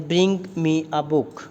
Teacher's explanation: ਦੇਖੋ ਬਰਿੰਗ 'ਤੇ ਬੁੱਕ 'ਤੇ ਸਟ੍ਰੈਸ ਦਿੱਤਾ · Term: ਸੈਂਟੈਂਸ ਸਟ੍ਰੈਸ